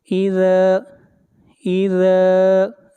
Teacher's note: ذال کو کھینچ کر پڑھیں گے 1 الف کے برابر